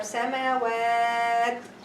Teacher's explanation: The tanween here turn into sukun, and we elongate 2 or 4 or 6 due to voluntary stopping. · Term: voluntary elongation due to stopping